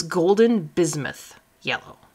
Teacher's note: The middle word here is bismuth. So the S is kind of pronounced like a Z